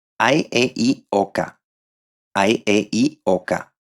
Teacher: the emphasis will be placed in an ascending way the last one being the most stressed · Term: main stress